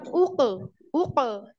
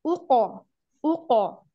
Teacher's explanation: kof sukun, hati-hati kof sukunnya ditebalkan. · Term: qalqalah